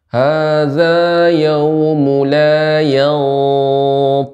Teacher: Ikhfa pada th dibaca dengan tebal.